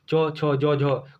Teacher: हिंदी की तालव्य ध्वनियाँ है